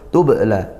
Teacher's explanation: tubla di situ ada ba sukun dipantulkan bacanya yaitu qalqalah sugra